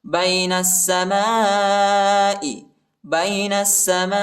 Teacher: نون کو سین کے ساتھ ملائیں گے، ٹھیک ہے، الف اور لام نہیں پڑھا جاتا